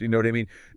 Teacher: The intonation, the tone, completely changes its meaning. So when it's a question with a rising tone at the end